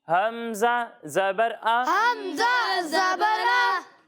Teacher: جب ہم حمزہ کی ادائیگی کریں گے تو اسے حلق کے نیچے والے حصے سے پڑھیں گے